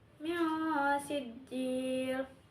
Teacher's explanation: Lalu yang ketiga itu pada kata mi sijjil hukumnya ikhfa hakiki yaitu nun mati bertemu dengan sin dibaca samar dengan dengung ditahan tiga harakat.